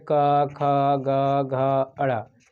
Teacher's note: कवर्ग का उच्चारण कंठ से होता है।